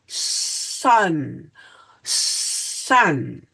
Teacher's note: notice there is no vibration because s is an unvoiced sound